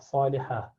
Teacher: Ta at the end, rounded ta, which when you stop at becomes ha